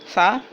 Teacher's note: ثا باریک اور نرم پڑھنا ہے